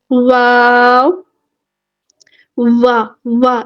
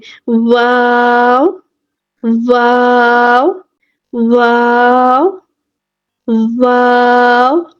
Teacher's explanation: واو ادا ہوگا ہونٹوں کی گلائی سے، بالکل ہمارے ہونٹ گلائی میں ہونے چاہیے، ادروائز کیا ہوگا کہ ہمارے جو دانت ہے نا اوپر والے دانت وہ نیچے ہونٹوں کو ٹچ کریں گے۔